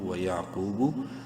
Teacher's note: قاف کو خوب منہ بھر کے پڑھنا ہے ، ایک الف برابر لمبا بھی کرنا ہے وہ مدہ کی